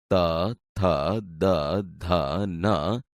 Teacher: ત વર્ગ એટલે કે દંત્ય વ્યંજનો